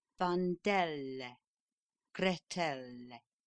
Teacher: K, L, M, N, P, S, R, and T at the end of a word or syllable must be made resonant by joining to the end of the word or syllable a rather audible e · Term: Resonant Consonants